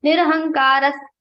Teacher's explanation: Nirahankara Visarga is followed by Sa. So we are changing this sound of Visarga into Sa.